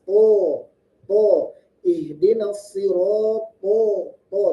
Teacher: kekhususan huruf to, dia memiliki sifat isti'la dan itbaq, tebal, naik ke pangkal, naik ke langit-langit atas.